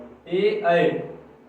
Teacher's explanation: कंठ से भी यानी ए और ऐ का जब उच्चारण करेंगे तो इनमें देखिए कंठ और तालु का दोनों का यूज होगा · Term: कंठ तालव्य